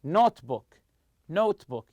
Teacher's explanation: The stress goes on the first part of the compound noun.